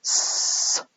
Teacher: s is the sound you get if you put your tongue onto your alveolar ridge, create this small gap, and you get this s sound.